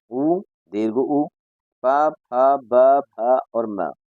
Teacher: ये सभी जो वर्ण हैं वो ओष्ठ से बोले जाते हैं। ओष्ठ अर्थात होठों से। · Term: ओष्ठ्यावर्णा